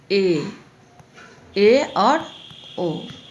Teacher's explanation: अर्ध संवृत में इसमें आपका मुख द्वार जो होता है मुख द्वार कम खुला होता है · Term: अर्ध समृद्ध